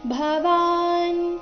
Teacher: ಭವಾನ್ ಇಲ್ಲಿ ಭ ಮಹಾಪ್ರಾಣ ರಸ್ವದಿಂದ ಶ್ಲೋಕ ಶುರುವಾಗ್ತಾ ಇದೆ